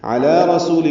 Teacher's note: علی رسول میں عین وسط حلق سے ادا کریں گے، لام پر کھڑا زبر ہے، 2 حرکات لمبا کریں گے۔